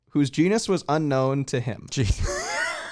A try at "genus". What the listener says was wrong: genus. Genus. You said genius.